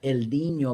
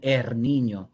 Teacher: And in Andalusia, you don't only have change from R to L, you have the other way. You have change from L to R. So something like El Niño become Er Niño.